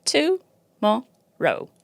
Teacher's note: example in the word Tomorrow there's three syllables to Mo R only one of them is stressed that's Mo · The others are schwa, which is something I will talk about in a minute. So again, in the word tomorrow, to and ro are schwa, and mo is a stressed syllable.